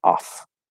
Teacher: off is ah the fifth vowel on the back and then an f sound off okay spelled with two f's it's not a long f